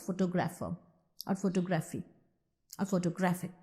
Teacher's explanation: The word photo, which happens to be the root, does not get the accent when you pronounce photographer or photography or photographic.